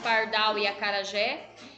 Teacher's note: A sílaba tônica é a última, ou seja, a mais forte é a última, como pardal e acarajé. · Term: oxítona